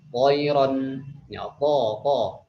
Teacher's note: Dia juga sama seperti huruf dhad, sad, ta juga dia punya sifat yaitu isti'na dan idbaq. Isti'la itu ketika diucapkan terangkat lidahnya tengah-tengah, dan juga idbaq yaitu melekat ke langit-langit atas